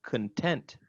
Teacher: it sounds like the ah sound has been reduced to a schwa